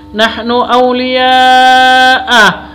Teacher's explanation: mat wajib mutasil, harus dibaca panjang sampai 5 ketukan. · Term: mad wajib mutasil